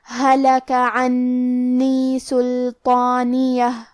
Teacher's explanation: کلمت سلطانیہ، یہاں حرف اللام ہے اور اس پہ جزم ہے، تو ہم لام کو ظاہر کریں گے۔ حرف الطو حروف التفخیم میں سے ہے، تو ہمیں یہ حرف کو بھاری آواز میں اور منہ پھلا کے پڑھنا ہے